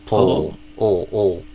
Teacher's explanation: Is instead of like a poo sound, I do more of a pull. That dark L, like the tongue kind of going back towards my throat. Like not the tip of my tongue, but almost like my whole tongue retracting backward, if that makes sense, or stretching backward.